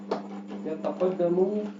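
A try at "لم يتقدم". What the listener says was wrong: Nah. Coba ulang. Lam yataqaddamu, ada lam sebelumnya. Lam itu amil apa? Lam. Yataqaddamu fi'il mudhari. Nah, berarti ada lam. Bagaimana? Lam yataqaddam. Ma, mu atau mi? Lam itu amil apa dulu? Cari tahu dulu lam amil apa. Amil nasab atau amil jazm? Atau amil cuma ada dua ya, amil nasab atau amil jazm. Lam. Lam yalid wa lam yulad. Berarti lam yalid. Berarti amil jazm.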